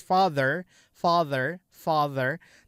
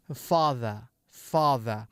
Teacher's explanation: Rotate itu maksudnya adalah kalau R-nya itu dibaca jelas gitu. Father, R-nya father, R-nya itu jelas father, father, father. · Father, R-nya father, R-nya itu jelas father, father, father. Tapi kalau British itu non-rotate, dia jadi father, father.